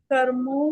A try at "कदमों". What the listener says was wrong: कर्मों नहीं है, दाल है वो